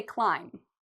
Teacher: Well, the first rule with the silent B is we don't pronounce B when there's an M before it